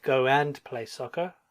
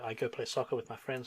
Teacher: This is technically go and play soccer, but in modern English, when we speak quickly, we don't hear the and. So I go play soccer with my friends.